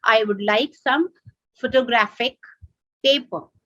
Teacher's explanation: the third syllable is stressed